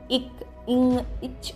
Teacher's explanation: இக், இங், இச் போன்ற மெய்யெழுத்துக்கள் அரை மாத்திரை அளவு ஒலிப்பவை. ஒரு மாத்திரை அளவு அப்படின்னா முழுமையான ஒலி அப்படின்னு அர்த்தம்.